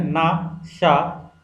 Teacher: जीवा जो होती है उसका नोक ऊपर के दांतों की पंक्ति के सामने वाले दांत के ऊपरी हिस्से के संपर्क में आकर वायु को रोकती है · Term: वात्सर्य